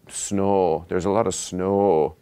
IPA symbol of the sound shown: o